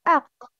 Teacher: Makhraj of qaf is the deepest part of the tongue and the closest to the throat.